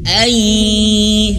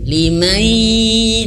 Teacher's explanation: nun mati berjumpa dengan huruf ya, itu juga harus masuk hidung